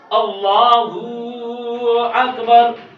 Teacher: اللہ کی ہا پر پیش کو کھینچ کر پڑھنا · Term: مدہ